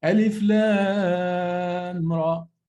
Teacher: I don't merge the meme of lam to the Ra. It's not merged. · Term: idhar